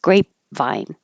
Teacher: you hold the P so there's no uh air · And these two words are very confusing because number six sounds the way that it looks, grape vine. And you hold the P so there's no air, just grapevine.